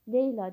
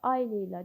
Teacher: Leyla deyiriksə vurğu əvvəldə, ay Leyla deyiriksə vurğu sonda olur. Ona görə xitab olan sözlərdə vurğu həmişə sonuncu hecadan bir öncəki hecaya keçir fikri yanlışdır.